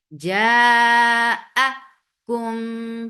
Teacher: Keep hamza very clear because we tend to merge it into mud letter. No, don't do that.